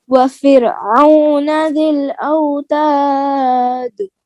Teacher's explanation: ہاں, دال میں قلقلہ, جہاں دال اینڈ ہو رہا ہے نا, وقف ہو رہا ہے, تو دال لاسٹ ہے, اس کے اوپر قلقلہ کریں